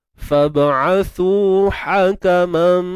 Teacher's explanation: ha pedas, tengah kerongkong sempit